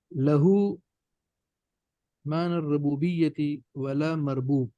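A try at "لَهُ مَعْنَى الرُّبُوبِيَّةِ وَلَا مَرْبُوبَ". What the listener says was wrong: مربوب آپ نے وقف کیوں کیا؟ پڑھنا کیا ہے وہ پڑھے نا.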